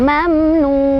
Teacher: Mad tabi'inya adalah waw sukun sebelumnya dhammah di nun dan huruf lainnya yang disukunkannya adalah nun. Jadi cara bacanya dipanjangkan, boleh 2, boleh 4, boleh 6. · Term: mad arid li sukun